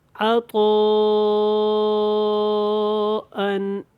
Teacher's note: تو ہم نے اس کو مد متصل کرنا ہے اور اس کی مقدار 2.5 الف کے برابر ہے